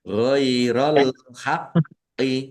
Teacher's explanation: Ghairol haqqi al-haqqi alif lam komariah ditandai lamnya dibaca sukun. Kemudian kofnya ada tasdidnya dibaca double. Ditekan dan ditahan biar tampak dobelnya.